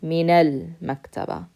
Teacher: you can connect the noon with the fatha na to the next letter